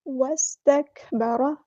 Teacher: را یہاں پہ پورا ادا کرنا ہے، ہیوی لیٹر ہے